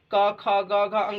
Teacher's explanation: तो कवर्ग में क हमारा कंठ से बोला जाता है